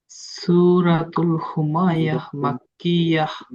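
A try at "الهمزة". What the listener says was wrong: হুমাযা, হুমায়া নয়, হুমাযা।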